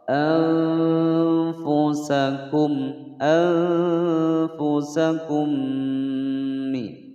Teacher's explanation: Mim sukun bertemu dengan mim dibaca dengung selama 2 ketukan. Ini hukum bacaan idgham mimi. · nun sukun bertemu dengan huruf fa, dibaca samar disertai dengan adanya dengungan selama dua ketukan. Ini hukum bacaan ikhfa ya, ikhfa ausat.